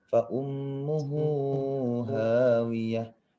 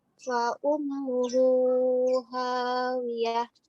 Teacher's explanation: Maka hu-nya itu dhammah terbalik. Di sini harus panjang. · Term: mad silah qasirah